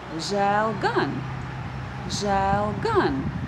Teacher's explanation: So, the first word, žēl, is not stressed. We will stress the second word, gan.